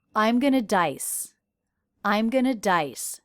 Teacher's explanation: because going is a helping verb here not the main verb the main verb is stressed